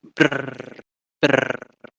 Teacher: trills, which is where your tongue basically hits the same place again and again in a repetitive motion. So as we all probably have heard many times, you have brr, brr.